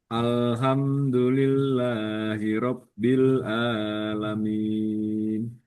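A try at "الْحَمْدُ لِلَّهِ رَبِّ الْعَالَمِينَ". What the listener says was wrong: Ha harus dia keluar nafasnya. Alhamdu.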